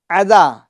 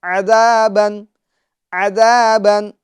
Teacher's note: عین کی آواز کو عین کی طرح نکالیں گے یعنی درمیان حلق سے نکالیں گے، حمزہ نما والی آواز نہ ہو، یعنی عذابن، عذابن نہیں، عذابن، عذابن.